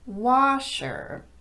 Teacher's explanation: If the word washer is all by itself, the stress is clearly on the first syllable and it will get a higher pitch. Washer. However, when that word is the second word in a compound noun, now you have to de-emphasize both of those syllables, and the first word gets all of the emphasis.